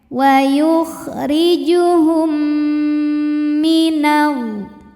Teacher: cara bacanya mim pertama dileburkan ke mim yang hidup disertai bunyi dengung m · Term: idgham mimi